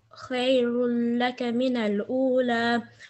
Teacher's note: no nasal sound on lam idgham ناقص